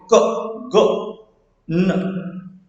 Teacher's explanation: जो पीछे की तरफ हमारी टंग जाती है, सॉफ्ट पैलेट पे जाके लगती है, तो उसको हम बोलते हैं वेलर।